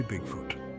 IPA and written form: ˈbɪɡfʊt (Bigfoot)